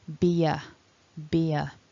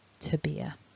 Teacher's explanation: we get this little very subtle linking ye sound